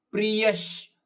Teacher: ಪ್ರಿಯ ಅಲ್ಲಿಯ ವಿಸರ್ಗ ಅರ್ಧ ಶದಂತೆ